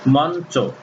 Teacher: উদাহরণ যেমন মঞ্চ, এখানে ন হস্যন্ত চ উকার হয়ে গেছে, তাহলে ইয়ের সঙ্গে চ যুক্ত হলে, ইয়র সঙ্গে চ যুক্ত হলে ইয়র উচ্চারণ আর থাকবে না, সেখানে হবে ন।